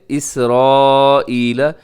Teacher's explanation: حروف مدہ اور حمزہ ایک لفظ کے اندر ہے، تو اس کو اپنے 4 سیکنڈ تک ضرور آپ اسے لمبا کیجیے گا۔ اسے مد متصل کہا جاتا ہے، مد واجب بھی کہا جاتا ہے۔